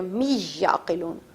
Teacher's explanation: یہاں پر ہم اختتام کرتے ہیں. آخر میں لِقَوْمٍ یعقلون پہ ادغام ہو رہا تھا، من کا نون ختم کر کے می سے چینج کر دیا